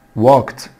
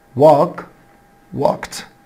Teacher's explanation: بعد ال k sound ال e دي بتنطق t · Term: t sound